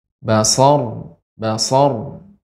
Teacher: ro yang sukun karena waqaf sebelumnya fathah dibaca dengan tebal namun getarannya ee sedikit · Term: ra yang sukun